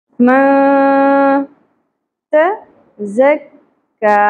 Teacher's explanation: نون ساکن پہ اخفا مع الغنہ ہوگا، آواز کو چھپانا بھی ہے اور ناک میں ٹھہرانا بھی ہے. من تزکا، ت باریک ہوگا، ز شدت ہوگی، سیٹی کی آواز آئے گی ز، ٹھیک ہے.